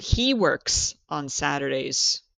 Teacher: Sometimes I hear people lose that s, especially if you are from Asia, China, Cambodia, Thailand, you lose the s. And what examiners hear is yes, he work on Saturday.